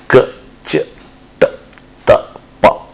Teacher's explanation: for production of these sounds vocal folds remains open there is no vibration of vocal folds at all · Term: unvoiced consonant